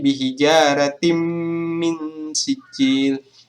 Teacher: bunyi tin ini dengan mim sehingga bunyinya adalah tim, bukan tin lagi, bukan n. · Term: idgham bigunnah